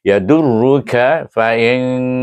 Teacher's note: nun sakinah bertemu dengan huruf fa. Dia pun sama juga ikfa hakiki wusta dengan dengung dua harakat.